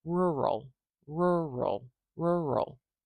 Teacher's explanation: Do you hear that extra push on the r at the beginning?